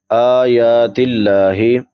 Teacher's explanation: आयातिल्लाही हमजा के ऊपर खड़ी ज़बर है, खड़ी ज़बर खड़ी देर उल्टा पेश को एक एक अलिफ के बराबर लंबा करते हैं। لفظ اللہ سے پہلے زیر ہے تو لفظ اللہ باریک ادا کیا جائے گا